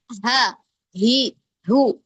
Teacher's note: ha kedorong ya secara alami dari bagian pita suara kita